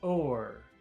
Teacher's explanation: It's very long, and I think that depending on the accent, it could be extremely long.